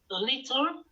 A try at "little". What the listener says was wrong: Yes, but don't say little, it's little. Little. Yeah, make it shorter. Little.